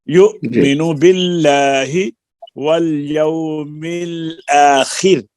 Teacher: را پر ہم نے وقف کیا، اس کا ما قبل خا کے نیچے کسرہ ہے، را باریک ہوگی